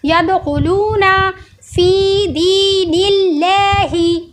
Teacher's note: तो यदखुलूना, अब ये खौ है, खौ हुरूफ मुस्तालिया है, इसको गोल करके पढ़ा जा रहा है